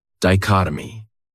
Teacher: This word has 4 syllables, and the stress is on that second syllable. Dichotomy. That third syllable has that schwa.